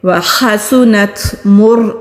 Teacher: را کو موٹا پڑھیں گے کیونکہ را سے پہلے پیش ہے